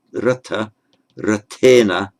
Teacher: because the tongue repositions itself after the r, it therefore does not have this retroflexing effect on the n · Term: regular dental n